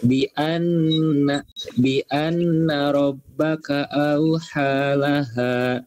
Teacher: Gunnah, makanya dibacanya ditahan, tahan mendengung.